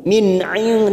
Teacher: nun sukun bertemu Ain Idhar halq dibaca jelas tanpa mendengung